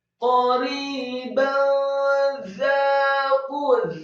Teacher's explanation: za-nya dibaca tipis, fathah dua harokat karena setelahnya ada alif. · Kemudian Za-nya dibaca tipis, fathah 2 harokat karena setelahnya ada alif. Kemudian huruf qaf-nya yang marfu atau dhamma dibaca tafkhim, tebal 2 harokat karena setelahnya ada wawu sukun.